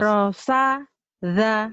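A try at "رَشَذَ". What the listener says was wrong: Rosyadza shin. Rosyadza. Huruf yang lain kamu bisa. Shin agak susah nih.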